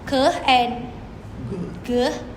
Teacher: The sound k and g are made by raising the tongue at the back of the mouth to make a complete closure. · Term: velar plosive